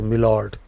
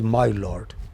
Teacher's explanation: my is pronounced as me because it is done in a hurry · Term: vowel is reduced